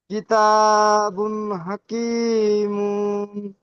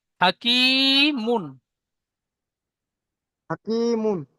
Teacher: মুন বলে টান দিচ্ছেন, মিম দুপেশ মুন, একটু টান হবে না